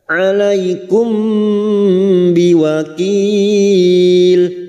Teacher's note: mim sukun bertemu ba ikfa safawi, mim sukun mendengung selama 3 harokat